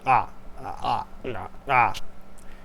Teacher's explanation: the glottalized vowel, where you kind of like swallow, you kind of like close your vocal cords. You say it's like ah, ah, ah, ah.